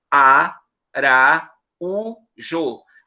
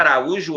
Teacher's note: a sílaba tônica é a penúltima realmente essa palavra é a palavra Araújo é paroxítona entretanto ela